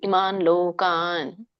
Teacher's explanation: ಗ್ಯಾಪ್ ಬಿಡ್ಬೇಡಿ, ನ ವ್ಯಂಜನ ಇದೆಯಲ್ಲ, ಕೂಡಿ